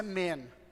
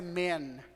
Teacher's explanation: Você alonga um pouco o tempo de pronúncia do E. Fica um pouco imperceptível para quem não está muito acostumado.